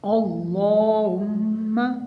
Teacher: میم میں غنہ ہوگا اور اللہ تعالیٰ کے نام کو موٹا پڑھنا ہے